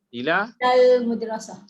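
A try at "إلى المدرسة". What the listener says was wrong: Jangan sambung. Cakap jangan sambung.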